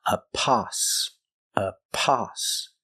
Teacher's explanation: We have the short sound, ah, like stop and hot.